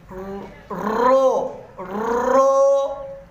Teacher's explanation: पहली तख्ती के अंदर जब अमूमन हम मुफरदात हर्फ अदा करते हैं तो इसकी आवाज़ हम मोटी ही अदा करेंगे, बारीक नहीं पढ़ सकते